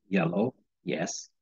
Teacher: is made by pushing the middle of the tongue towards the roof of the mouth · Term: the Y sound